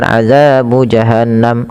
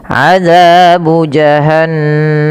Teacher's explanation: Nah, ini ada gunnah. Ingat gunnah itu wajib ditahan nunnya